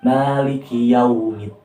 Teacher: jadi cara membacanya itu dia seperti huruf K disertai dengan keluar nafas